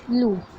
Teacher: پیش کی آواز آگے کو جاتی ہے اور ہونٹ گول ہو جاتے ہیں